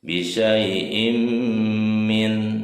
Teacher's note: Jadi di apa yang kasroh tainnya dimasukkan ke huruf mim. Mimnya ditahan ya sampai mendengung. Im bisyai'im ya, idgham biguna.